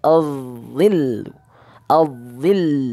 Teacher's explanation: ujung lidahnya sedikit saja kena, kemudian isti'lanya langsung terasa ya